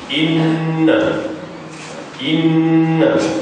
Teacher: Maka begitulah cara sebutan ataupun cara kita baca dia iaitu dengan didengungkan dengan kadar dua harakat